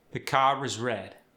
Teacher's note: But we actually link the R when it's followed by a vowel.